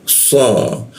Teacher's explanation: Nah so, masuk ke so di belakang gigi bagian bawah, lidahnya dilengkungkan